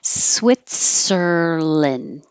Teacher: We don't say land. It's lin or lun, but not and.